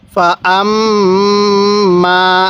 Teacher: আম নাকের বাঁশি দ্বারা গুন্নাহ করব কারণ মিমে নুনে তাসদিদ গুন্নাহ করা ওয়াজিব